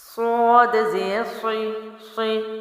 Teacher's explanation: صی اس کا موٹا لفظ ہے تو آواز موٹی ہے، زیر ہے باریک رکھیں گے، لمبا نہیں کریں گے، مجہول نہیں کریں گے، جھٹکا بھی نہیں دیں گے۔